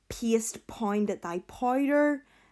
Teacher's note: that repeated P sound, that plosive alliteration